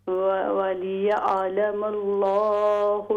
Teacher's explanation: لام کو اور بھی موٹا کیجیے فل ماؤتھ سے